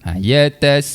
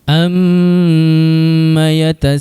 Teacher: Terbaik, alhamdulillah. Tu sin baris atas dibaca dengan kadar 4 atau 5 harakat, kemudian diikuti pula dengan huruf hamzah baris atas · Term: mat wajib muttasil